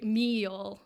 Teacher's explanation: And to simplify it a lot, what it really means is the way that the vowels are pronounced. So what would be like a plain simple vowel in a northern dialect becomes like what's it called, diphthong, so 2 vowels put together, or even a triphthong, so 3 vowels put together. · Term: drawl